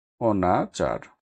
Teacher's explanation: শব্দের আদিতে না বোধক অ এর উচ্চারণ বিবৃত হয় মানে স্বাভাবিক হয় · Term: বিবৃত উচ্চারণ